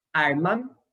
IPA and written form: "aɹma" (arma)